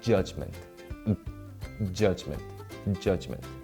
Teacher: when you pronounce the j if you pay close attention to the pronunciation itself there's a slight moment when you block the air before you articulate it